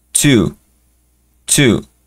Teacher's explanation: el two es una t un poquito escupida no es un t Porque si fuera t la la fonética